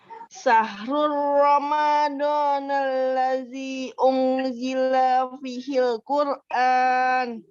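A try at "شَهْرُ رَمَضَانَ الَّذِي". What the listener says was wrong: Oke, coba dari alladzinya panjangkan ya. Syahrul Ramadan alladzi, panjangkan.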